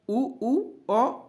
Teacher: वे स्वर जिनका उच्चारण करते समय ओष्ठ गोल हो जाते हैं, अर्थात वृत्त जैसी आकृति ग्रहण कर लेते हैं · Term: वृत्ताकार